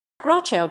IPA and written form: ˈɡrɔxuf (Grochów)